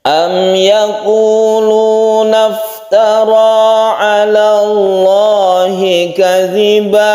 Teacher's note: Lafaz Allah ini lafdzul jalalah dibaca tebal atau tafkhim karena sebelumnya ada fathah.